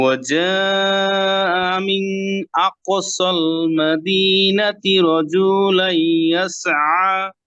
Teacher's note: এখানে গুন্না নাই, তা নুন সুকুনের পরে হামজা আসছে